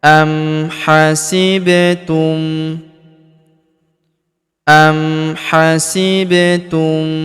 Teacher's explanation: Huruf ba berharakat sukun kita pantulkan atau kita qalqalahkan.